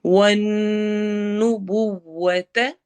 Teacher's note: والنبوۃ نون پر ہم نے غنہ کرنا ہے